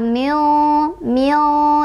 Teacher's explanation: Cara bacanya adalah disamarkan sambil berdengung ya, jangan terlalu jelas, jangan juga dimasukkan dengungku di antara izhar dan idgham. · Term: ikhfa ausath